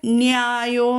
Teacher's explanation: യകാരത്തിന് മുമ്പ് നാ വന്നാൽ നാ ദന്ത്യമായിട്ട് ഉച്ചരിക്കില്ല, വത്സ്യമായിട്ടാണ് ഉച്ചരിക്കുക.